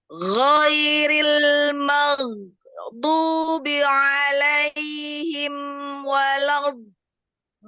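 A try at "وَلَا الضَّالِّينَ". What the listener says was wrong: Ya, coba di huruf dotnya jangan kayak huruf dal. Walad do enggak. Walau Nah, jadi dia ada ada rokhawah dan ada istiqolah. Kuatan yang mana? Tidak ada yang kuat karena huruf dot itu ada rokhawah.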